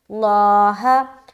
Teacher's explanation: لفظ اللہ کا لام کو موٹا رکھیں گے کیونکہ یہاں پر زبر آ گیا